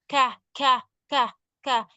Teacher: Itu sedikit ada hembusan nafas.